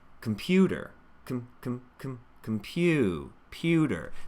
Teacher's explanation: There's that U diphthong, and my teeth separate to help me make that the musical part of this word.